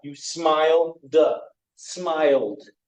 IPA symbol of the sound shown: d